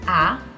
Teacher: the second tone is a rising tone